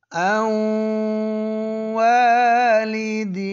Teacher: یعنی زبان کی نوک اوپر تالو پر نہیں لگا رہے، لیکن ناک میں آواز